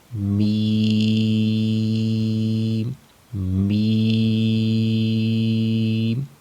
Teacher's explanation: میم کا مخرج ہے دونوں ہونٹوں کا خشک حصہ، یعنی دونوں ہونٹوں کا جو باہر والا خشک حصہ ہے، دونوں ہونٹوں کے باہر والے خشک حصے کو آپس میں ملائیں گے تو وہاں سے میم ادا ہوگا